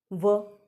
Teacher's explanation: दंत और ओष्ठ, वकारस्य दंतोष्ठ दंत्योष्ठौ, वकारस्य दंतोष्ठौ, यानी कि व का उच्चारण जो है वो दांत और होंठ की सहायता से होता है, इसलिए इसको दंत्य ओष्ठ वर्ण कहते हैं। अब आप व बोल करके देखें, व, जब आप व बोलते हैं तो हमारी ज़ुबान कहीं ना कहीं हल्की सी वहाँ स्पर्श होती है दांतों के वहाँ पर, और होंठ का प्रयोग होता है व।